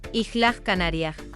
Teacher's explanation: the S at the end of the syllable becomes an H